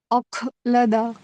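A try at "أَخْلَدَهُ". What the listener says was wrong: اخلد. اخ نہیں. میں نے یہی خا پہ آپ کو ایک مہینے پہلے بھی بولا تھا ایک جگہ، مجھے یاد آ رہی ہے ابھی. وہاں پہ اگر صحیح کر لیتی آپ، یہاں پہ دیکھنا نہیں پڑتا.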